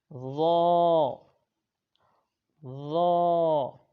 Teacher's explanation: زبان کا سرا اور اوپر کے دانتوں کے اندرونی کنارے سے ہم نے ادا کرنا ہے اور اس کو بغیر سیٹی سے پڑھنا ہے